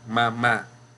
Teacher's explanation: La sílaba tónica se encuentra en el último lugar. · en el último lugar, como ustedes notarán, está la sílaba tónica